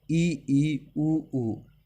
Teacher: संवर्त स्वर, मुख का न के बराबर खुलना